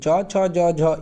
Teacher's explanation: ये तालु से होते हैं उच्चारण, इसलिए इसे तालव्य कहते हैं।